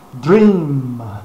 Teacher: Nesse caso, a boca se fecha, os lábios se fecham para se pronunciar um M ou um ME final.